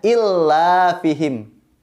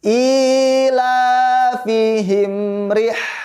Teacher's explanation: Ya, anak-anak, adik-adik semua, ketika kita baca ayat 2 surat Al-Quraisy, kita harus hati-hati karena bukan bacaannya illa, melainkan ila. I-nya panjang, lamnya juga panjang.